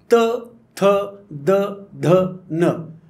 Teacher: दंत्य शब्द, दाताला जीभ चिटकून किंवा दाताच्या दिशेने जीभ नेऊन.